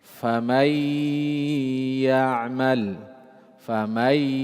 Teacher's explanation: Ada gunnah. Gunnah mesti harus keluar dari tajwifil anf, rongga hidung. · Karena nun ketemu ya ada gunnah di situ.